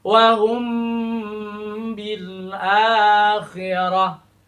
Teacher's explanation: Huruf mim bertemu dengan huruf ba ya, tidak disatukan, memang berpisah, tetapi di sini ada bunyi sengau, ada bunyi khaisum, bunyi hidung, dengung ya. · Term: ikhfa syafawi